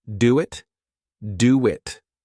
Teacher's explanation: Here we add a sound. Do ends with a vowel sound. It starts with a vowel sound. So we insert a w sound between them.